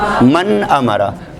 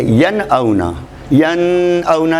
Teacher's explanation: نون کو صاف واضح اور جلدی پڑھ دینا ہے